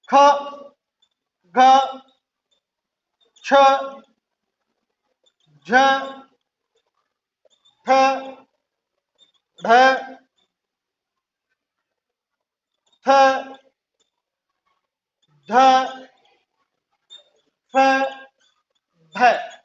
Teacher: महाप्राण व्यंजन है जो, ये देखिए इनके उच्चारण में, इनके बोलने या उच्चारण में फेफड़ों से बाहर निकलने वाली वायु की मात्रा कैसी होती है? अधिक होती है।